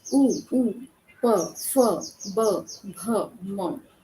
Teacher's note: जहाँ पर ओठों का उपयोग किया जाता है, जहाँ पर आपके ओष्ठ काम आ जाते हैं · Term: ओष्ठ्य